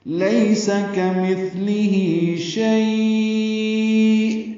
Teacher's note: ہا کو، اور لیس پڑھیں گے، لیس کمثلہ شیء، لین ہے، نرمی سے پڑھیں گے اور زیادہ لمبا نہیں کر سکتے، 1.5 حرکت ہی لمبا ہے